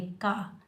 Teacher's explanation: रब, काफ के ऊपर ज़बर, बगैर खींचे पढ़ेंगे, इस काफ को हम बारीक पढ़ेंगे